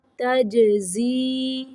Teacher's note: جیم کو قلقلہ پڑھنا ہے